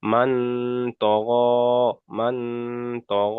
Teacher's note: হুরুফে ইকফার 15টি অক্ষরের মধ্যে থেকে ত এসেছে, তাই নুন সাকিনের আওয়াজকে নাকে তুলে একালিক পরিমাণ গুণনা করে পড়তে হবে · গয়নের উপরে খাড়া জবর এসছে, খাড়া জবর আলিফ মাদ্দা সমতুল্য, তাই খাড়া জবরকে একালিক পরিমাণ টান দিয়ে পড়তে হবে। · তারপরে তয়ের উপরে আচ্ছা, জবর এসছে, জবরটি হলো হারাকাত, টান দেওয়া নিষেধ